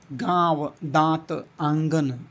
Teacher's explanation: वायु ध्वनि मुख के साथ-साथ नाक से निकलती है। नाक से भी निकलती है। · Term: अनुनासिक स्वरों